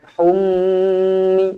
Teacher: mim yang bertanda sabdu wajibul ghunnah dengung dua harakat